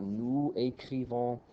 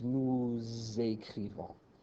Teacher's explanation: When you have these silent S's, but the next word begins with a vowel, you hear a bit of an S or a Z sound there linking them together.